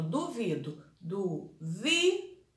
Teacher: a mais forte, a vi, ela é a penúltima, então ela é paroxítona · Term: penúltima sílaba tônica